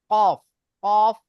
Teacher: জিভের গোড়া এবং তার বরাবর উপরের তালুর সাথে লাগিয়ে উচ্চারিত হয় কফ।